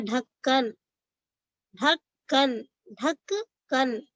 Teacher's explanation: यहाँ काफ की आवाज क्या है डबल आ रही, तो काफ के ऊपर क्या है तशदीद है।